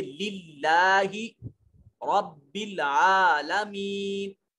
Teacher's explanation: اس میں جلالت سے پہلے جب کبھی زیر آ رہا ہو تو پھر اس میں جلالت کے لام کو موٹا نہیں کرتے